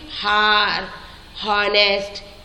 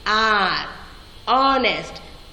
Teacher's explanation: We are not pronouncing H there. H is silent here.